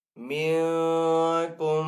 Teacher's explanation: نون ساکن ہے، نون ساکن کے بعد کاف ہے حروف اخفا میں سے، تو یہاں پہ اخفا کریں گے ، یعنی کہ غنہ